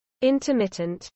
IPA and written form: ˌɪntəˈmɪtənt (intermittent)